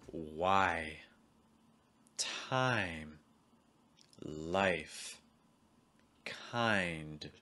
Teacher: in general your mouse is going to start wide and close your tongue is going to start low and then rise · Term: i sound, I sound